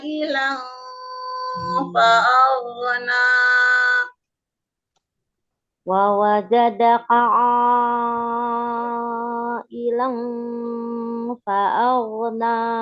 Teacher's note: Hilang tanwin bertemu fa-nya, konsistenkan untuk tanwin bertemu fa itu ifa hakiki ausat ya Bun, antara dengung dengan samarnya itu seimbang